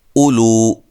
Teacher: اولو حمزہ کو تحقیق سے پڑھیں گے